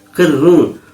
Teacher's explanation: حالت وقت میں دو پیش کی تنوین جزم سے بدل جائے گی، اور یہ را حالت وقت میں باریک پڑھی جائے گی